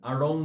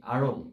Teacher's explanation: এটি কিভাবে উচ্চারণ করতে হয় উচ্চারণ করতে হয় ড এবং র ড যেখান থেকে উচ্চারিত হয় ঠিক সেই জায়গা থেকে তোমার একটা র বের করতে হবে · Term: তারণজাত ধ্বনি